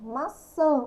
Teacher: o an é um som nasal · Por que ele é considerado um som nasal? Porque o som dele sai pelo nosso nariz.